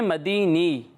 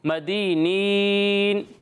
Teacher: یہ مدینی نہیں ہے، آخر میں نون بھی پڑھنا ہے، ٹھیک ہے؟ مدینین۔